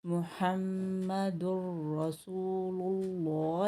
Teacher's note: देखिए, तनवीन के बाद, यार-मलून से 'रा' आया है, इसलिए तनवीन का एक पेश छूट गया है, और चूंकि रा पर एक तशदीद है - जो यार-मलून से है - हम इसे पिछले अक्षर से जोड़ते हैं और इसे दोहरा पढ़ते हैं। जैसे यहां: "मुहम्मदुर रसूलुल्लाह," हम इसे इस तरह पढ़ते हैं। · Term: Idgham Bila Ghunnah